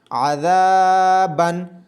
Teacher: ذال کو الف مدہ ہونے کی وجہ سے لمبا کیا جا رہا ہے، عین کو لمبا بالکل بھی نہیں کیا جائے گا